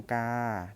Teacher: จริงๆแล้วมันมีเสียงวรรณยุกอยู่นะครับคือเสียงสามัญนะครับ